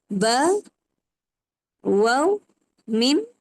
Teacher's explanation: Yang keempat huruf as-syafatain. As-syafatain ni dia daripada dua bibir mulut.